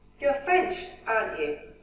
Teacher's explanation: question tags expecting confirmation we use falling intonation